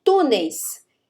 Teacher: Veja que esse I é um ditongo oral, por quê? O som sai pela boca e não pelo nariz, né? Grosso modo dizendo.